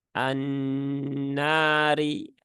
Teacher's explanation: ada Alif setelah fathah maka setelah ditahan tiga harakat harakatnya fathahnya dipanjangkan dua harakat annari rinya cukup satu harakat dan dia huruf tipis ya e